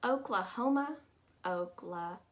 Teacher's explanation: both those a's take on a u sound and that's all you really need to know